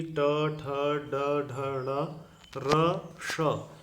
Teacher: ट, ठ, ड, ढ, ण, र, श, इनका उच्चारण स्थान मूर्धा है